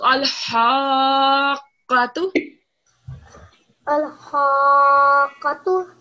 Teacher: It's the other ha. This is the ha when you pronounce it from the middle of your throat.